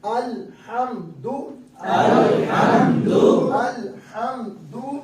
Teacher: لام باریک ادا کریں گے کیونکہ لفظ اللہ میں لام استعمال نہیں ہوا ہے